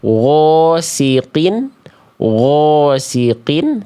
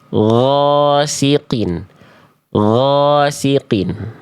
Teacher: Kadar tebalnya dihasilkan dari pangkal lidah terangkat.